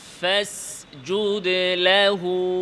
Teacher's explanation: হচ্ছে ঠোঁটের যাহির আর যেটা ভেজা অংশ ভেতরের ভেজা এদিকে খেয়াল ভেতরের ভেজা অংশ যেটা দেখা যায় না এটা হচ্ছে বাতিন তো ওই অংশটাকে উপরের দাঁতের সাথে লাগিয়ে ফা আদায় করতে হবে